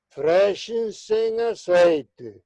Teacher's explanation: E podemos dizer, se teñen o audio aberto, e se non apaguen, freshense en aceite. E o mellor é non interdentalizar o Z, porque a boa pronuncia que hoxe está acantoada nas Rías Baixas é con ceseo de ese prácticamente como o noso aquí no Río da Prata.